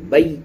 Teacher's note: او کی آواز اور اے کی آواز نہیں نکلے گی۔ اگر یہ دونوں آوازیں نکال رہے ہیں، واو کی جگہ پہ او کی اور یا ساکن کی جگہ پہ اے کی، تو یہ دونوں آوازیں غلط ہوں گی اور ہمارا تلفظ، پروننسیشن درست نہیں ہوگا، صحیح نہیں ہوگا۔